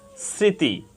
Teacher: ফালা সংযুক্ত থাকে তাহলে ম ফালার কোন উচ্চারণ হবে না কিন্তু বাংলা প্রমিত উচ্চারণে যে বর্ণের সাথে ম ফালা যুক্ত হয়েছে সে বর্ণটি নাসিক্য হবে · স্মৃতি, এখানে প্রথম বর্ণ দন্ত স এর সাথে মফলা যুক্ত হয়েছে। প্রথম বর্ণ দন্ত স এর সাথে মফলা যুক্ত হওয়ার কারণে মফলার কোনো উচ্চারণ হয়নি, বরং প্রথম বর্ণ তালব্য স সামান্য নাসিক্য হয়েছে।